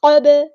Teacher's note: ہے، من قبل، قاف ہیوی لیٹر ہے پورا ادا کریں گے، با ساکن پہ کلکلا ہوگا